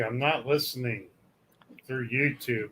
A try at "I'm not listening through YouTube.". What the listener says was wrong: Don't pause at the wrong place. You said you're not listening. You said you're not listening. Pause. Then you continued. The emphasis is in the wrong place, sir.